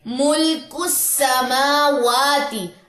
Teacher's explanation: کاف کی پیش کو آپ نے سین کے ساتھ جا کے ملانا ہے۔ یہ حمزہ وصلی اور لام جو ہے یہ دونوں حذف ہو جائیں گے، یہ پڑھے نہیں جا سکتے۔